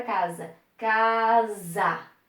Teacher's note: s deve ser utilizado aqui porque está entre duas vogais e entre duas vogais ele tem som de z